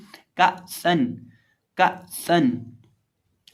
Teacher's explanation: हमदा जब साकिन हो तो उसको झटके के साथ पढ़ा जाता है और सीन में सिटी की आवाज़ पैदा करके पढ़ेंगे